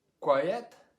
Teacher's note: here we've got two vowels next to each other and we can hear both vowel sounds · this little sound is important in the middle because if we don't get the ya sound it's hard to hear the two syllables